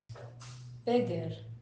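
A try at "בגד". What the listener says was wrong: Beged. This is a dalet, yeah.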